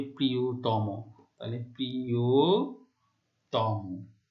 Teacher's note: তম প্রত্যয় দ্বারা গঠিত শব্দের শেষের অটি ও এর মতো উচ্চারিত হচ্ছে। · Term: সংবৃত